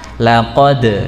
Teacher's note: kalau membaca huruf dal mati di sana ada pantulan